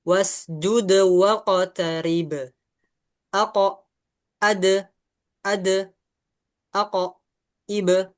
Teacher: kita lihat ada tiga qalqalah di sini yang dipantulkan ingat konsepnya pantulkan saja